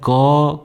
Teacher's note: आप नोटिस भी करेंगे जब हम क बोलते हैं तो पहला जो क का के है वो शुरू में आता है, लेकिन जब हम क को खत्म करते हैं तो अंत में एक अ आता है, अ का साउंड आता है। जब मैं क कहता हूँ तो क जब एंड हो रहा है तो एक अ का साउंड आ रहा है, अ की ध्वनि आ रही है।